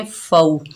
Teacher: मा, फमा, फा के ऊपर ज़बर, आगे वाव साकिन है, ये वाव लीन है, इसको नरमी और जल्दी से अदा करेंगे। फ़ौ, कौफ के ऊपर ज़बर बगैर खींचे पढ़ेंगे, कौफ मोटा हरूफ है।